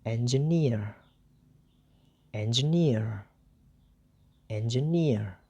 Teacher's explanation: the second syllable is D is also distressed or unstressed and the third syllable that is near is stressed so the syllable near is read more clear more loud rather than the other